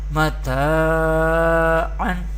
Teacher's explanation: Here zabar harkat and here is zabar before alif sakin, there is alif madda and there is do zabar tanween, and alif madda we pronounce madda letter by stretching up to one alif or two harakat